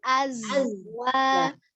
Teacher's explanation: huruf zai sukunnya tidak dipantul ya, bukan azwa, bukan Mantul ya, azwa.